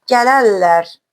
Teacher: Gələrlər sözündə isə r samiti çevrilib l ola bilir tələffüzdə.